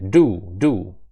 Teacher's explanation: язик треба підняти вгору до альвеол. Це такі бугарки у нас там зверху над е під точніше верхніми зубами. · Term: звук Д